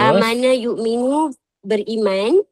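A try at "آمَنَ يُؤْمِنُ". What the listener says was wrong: Ibu kena panjangkan amanah. Kalau amana aman. Amana.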